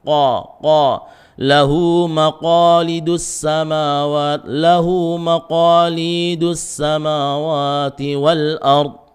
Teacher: Makhrajnya huruf qaf itu ada di lidah bagian ujung belakang